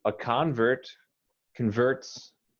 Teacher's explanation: as a noun you emphasize the first syllable